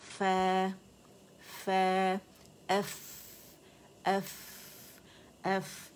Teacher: बात हमारा जो निचले होंठ का जो पेट है, गीला वाला हिस्सा, ये उठेगा नरमी से दांतों के किनारों पे, ऊपर के सनाउलिया को लगेगा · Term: फ़ा साकिन